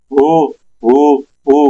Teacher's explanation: اب اس کے اوپر ہم نے پیش لگا دی، ہونٹ گول ہوں گے، باقی سب کچھ سیم رہنا ہے. ہا سینے سے ادا ہو رہا ہے، لیکن جب باہر نکلے گا تو میں نے ہونٹ اپنے گول کرنی ہے کیونکہ پیش پڑھنا ہے. حمزہ پیش او او اور ہا پیش ہو ہو ہو.